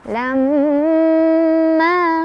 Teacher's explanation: Lam ada gunnah musyaddada atau gunnah aja ya, karena ada mim yang bertasydid. Cara bacanya didengungkan, ditahan dulu · Ma tabi'i karena ada alif sebelumnya fathah, dibaca panjang 2 harokat